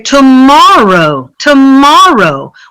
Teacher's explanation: If we say tomorrow, tomorrow, we have 3 syllables, and we're going to stress the second syllable.